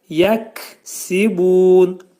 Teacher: Kəf hərfinin məxrəci dilçəyin axırındadır.